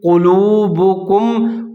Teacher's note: قاف کو موٹا کر کے پڑھنا ہے، لام پیش والو وہ مدہ تھوڑا سا اس کو لمبا کر کے پڑھنا ہے۔